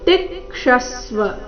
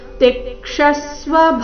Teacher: ತಿ ಮತ್ತೆ ಕ್ಷ ಮೇಲೆ ಆಘಾತ